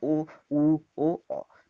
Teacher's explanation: उ बोलते समय आपका मुंह, जैसा कि हम देख पा रहे हैं, व्रताकार हो पा रहा है, तो व्रतमुखी बोला जाएगा, उ, उ, ओ, औ।